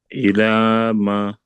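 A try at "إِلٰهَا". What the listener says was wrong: No, it's ha. Last letter. Ilaha.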